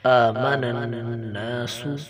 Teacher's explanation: نون مشدد ہے، نون کے اوپر غنہ کیا جائے گا. غنہ کی تعریف میں نے پہلے بھی بتائی تھی کہ ناک میں آواز کو چھپانے کا نام غنہ ہے.